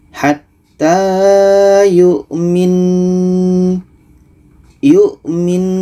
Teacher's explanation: Nun ini kita dengungkan setelah itu baru matikan